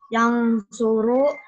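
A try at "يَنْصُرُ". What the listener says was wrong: Jangan diengkan. Yan suruh, N saja jelas.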